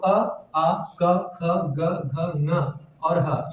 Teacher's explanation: ये सभी कंठ से उच्चरित होते हैं।